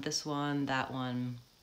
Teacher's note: I'm not really stressing the th I'm not holding it a long time